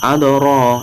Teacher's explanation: Adoro dipantulkan, adoro, dalnya tipis. Adoro, nah ro ini terdapat ro tafkhim, dibaca tebal karena berharokat fathah, dan harokatnya itu fathah berdiri sama dengan fathah yang bertemu dengan alif, maka disebut mad tabi'i, dibaca 2 ketukan.